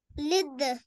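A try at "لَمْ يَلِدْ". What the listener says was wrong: नहीं यलिद, या पढ़े आप ये देखो ना, एक डंडा ऊपर नीचे दो नुक्ते, या आ रहा है ऊपर, फतहा आ रहा है, लम यलिद यलिद,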